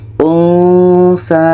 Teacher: ketika sebut huruf nun kita sudah merasakan huruf tsa